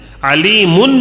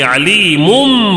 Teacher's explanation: دوسرا تنوین کے بعد با آیا ہے تو اقلاب کا قاعدہ، اقلاب یعنی غنہ کر کے پڑھنا ہے، ناک میں تھوڑی دیر آواز کو گھما کے غنہ کر کے پڑھنا ہے، اور دوسرا میم سے بدل دینا ہے، علیمن نہیں بولیں گے، علیمم بولیں گے، علیمم۔